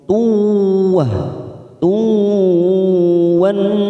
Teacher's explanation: Ada dua tanwin bertemu dengan waw, namanya idgham biguna. Kita tekan 3 ketuk, siap masuk ke huruf waw.